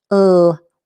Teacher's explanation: the L is made with the tip of the tongue again up on the alveolar ridge. World. This is a dark L as well.